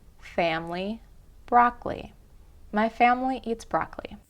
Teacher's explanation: You can see the same kind of vowel drop happen in the word family, where the I is dropped in the middle, and in the word broccoli, where that second O is dropped as well